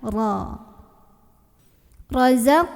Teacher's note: dibunyikan secara tafsin karena rok berbaris dan barisnya itu Fatah diatas maka bacanya ditebalkan dengan cara mengangkat pangkal lidah kita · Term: tafkhim